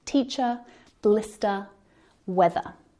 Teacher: we don't pronounce the R sound at the end of words